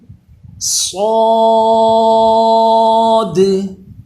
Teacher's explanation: صاد پہ سیٹی بھی پیدا ہوتی ہے لیکن اس کی آواز پر ہوتی ہے، موٹا پڑا جاتا ہے، یہ حروف مستعلیہ ہوتا ہے۔